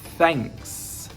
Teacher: your tongue is out of your mouth okay and you need to blow a little bit of air between your teeth and your tongue here so you need a little Gap and blow some air